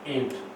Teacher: ईंट। अब ये यहाँ पर अनुस्वार नहीं है, चंद्र बिंदु है, इसका उच्चारण करेंगे तो मुख और नाक दोनों से होगा, अनुनासिक ध्वनि है